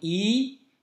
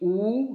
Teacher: Misalnya bunyi i, lidah kita di depan, tapi bunyi u, ya, di belakang